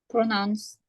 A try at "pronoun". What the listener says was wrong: Pronoun. Bukan pronouns, beda.